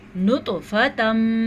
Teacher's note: نطفتم ادغام بالغنہ، لیکن توا پہ قلقلہ بھی کرنا ہے کیونکہ توا جو ہے وہ حروف قلقلہ میں سے ہے